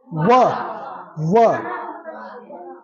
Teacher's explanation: ये कहते हैं दंतोष्ठम, माने दंत और ओष्ठ से, दंत और, हाँ, दंत और ओष्ठ से बोला जाता है व · होठों का सहारा हो रहा व, और दंत छू रहा हमारा जीभ